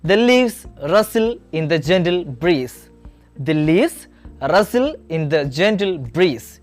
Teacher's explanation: the word leaves, rustle, gentle, breeze are stressed because they carry the main meaning. The other words are said more softly. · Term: sentence stress